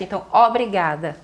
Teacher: e lá no Nordeste o O já fica aberto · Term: O aberto